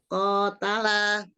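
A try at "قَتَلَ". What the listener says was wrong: Enggak kotala gitu Mi, enggak Mi. Tanya terbuka Mi. Dibuka ya fathah aja.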